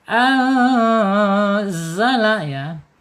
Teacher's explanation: Nun sukun menghadap huruf zai ya. Ini nanya ikhfa hakiki. Dibaca samar dan ditahan dua harakat.